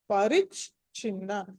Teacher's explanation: ఆ మొదటి చ మామూలు అల్ప ప్రాణం చ, రెండో చ వచ్చేసి మహాప్రాణం చ. కాబట్టి పరిచ్ఛిన్న దీర్ఘం ఉంది, నా కింద నా వద్దు, తర్వాత దీర్ఘం.